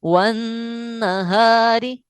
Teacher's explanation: را باریک ہے کیونکہ را کے نیچے زیر ہے